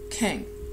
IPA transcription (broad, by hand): kɪŋ